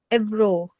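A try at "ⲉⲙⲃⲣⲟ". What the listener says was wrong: M and then vro. Embro. Embro.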